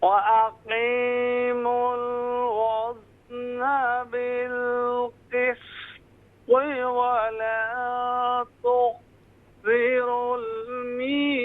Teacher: بالقسط میں جو قاف کے بعد سین ہے، قاف فل ماؤتھ ہوگا، سین لائٹ ہوگا اور پھر طا جو ہے فل ماؤتھ ہوگا. اور اسی طرح تخ میں جو یہاں پر خا پر قلقلہ ہو رہا ہے، تخ یہاں قلقلہ نہیں ہونا چاہیے.